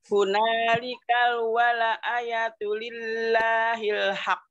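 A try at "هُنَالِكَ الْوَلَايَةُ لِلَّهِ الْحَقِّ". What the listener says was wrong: Walanya panjang. Wala.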